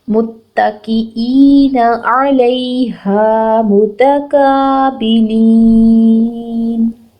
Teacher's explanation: عین کے اوپر ایک حرکت ہے، بالکل نہیں لمبا کریں گے. لام زبر یا لئی ہے، نرمی سے پڑھیں گے، لیٹر آف لین ہے · حمزہ زیر یا ای 2 حرکت لمبا کریں گے · میم کے اوپر پیش ہے، اس کو ہم نے فوراً سے نیکسٹ تا کے ساتھ ملا کے ہوئے ادا کرنا ہے. تا کے اوپر ایک حرکت ہے، اس کو لمبا نہیں کرنا.